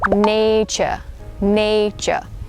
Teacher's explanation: So the TU, you would pronounce it as the CH sound.